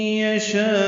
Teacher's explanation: یشاء میں شاء الف مدہ ہے اور اس کے بعد حمزہ آنے کی وجہ سے مد متصل ہے